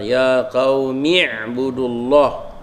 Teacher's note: Bila kita wasal, maknanya kita tak sebutlah hamzah tu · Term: hamzah wasal